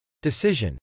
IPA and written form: dɪsˈɪʒən (decision)